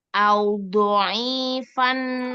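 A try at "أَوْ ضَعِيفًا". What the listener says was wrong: Jangan masuk ke hidung. Ain. Au dha'ifa. Mat jangan masuk ke hidung.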